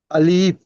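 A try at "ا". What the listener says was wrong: আলিফ টান হবে না, আলিফ। জলদি বলতে হবে। আলিফের নিচে দেখেন একটি গুণের চিহ্ন রয়েছে। গুণের চিহ্নের উদ্দেশ্য হলো আলিফটি সরল ভাবে স্পিডে বলতে হবে, একটু টান হবে না। আলিফ।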